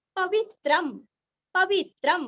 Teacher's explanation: अनुस्वार का उच्चारण आधा म